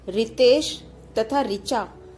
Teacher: हिंदी भाषाभाषी लोग इसका उच्चारण र, धन, ई, री के रूप में करने लगे हैं। इस तरह हिंदी में रितेश तथा ऋचा शब्दों की पहली ध्वनि के उच्चारण में कोई अंतर नहीं रह गया है।